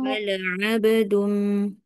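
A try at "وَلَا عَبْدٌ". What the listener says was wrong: Jangan wala ab. Nanti dia jadi hamzah.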